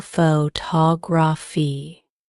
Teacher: Take the word photography, for example. The stress is on the second syllable photography. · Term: word stress